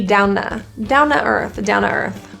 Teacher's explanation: So down, now it sounds like ta. We're going to get rid of the T, down to earth, down to earth.